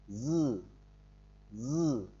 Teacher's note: phát âm gần giống như chữ dư của tiếng Việt nhưng không rung lưỡi.